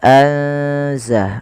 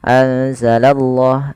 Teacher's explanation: kita menebalkan pada lafal Allahnya. Karena di sini lafzul jalalah yang didahului dengan huruf fathah atau dhammah. · memasukkan nunnya atau menyamarkan nunnya kepada huruf zai. Ya, anza langsung kepada makhraj daripada huruf zai. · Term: ikhfa